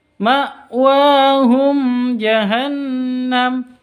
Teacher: Hum mim mati bertemu dengan Jim cara bacanya jelas tanpa dengung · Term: izhar, izhar safawi